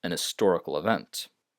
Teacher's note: Historical, a history, but usually for the adjective historical here, you pronounce it so fast that you almost don't even hear the H